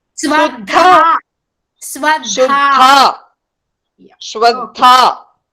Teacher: Swadha dha is Mahaprana with elongation.